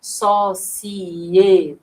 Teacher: Apesar de sociedade parecer um ditongo, é um iato na realidade, né? Veja que na nossa pronúncia o é ele tem autonomia, ele fica sozinho, ó, sociedade.